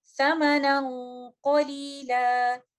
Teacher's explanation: नून साकिना का इख्फा होगा, हम कंप्लीट गुन्ना का उसको टाइम देंगे। चूंकि कॉफ एक हैवी लेटर है तो गुन्ना भी हैवी होगा, और इन अल्फाज की अदायगी हम इस तरह से करेंगे, समनन कलीला।